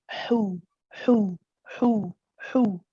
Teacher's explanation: this is the breathy one where you actually have a very gentle squeeze in the middle of the throat, but you allow the breath. Now you have a conscious movement of breath coming out.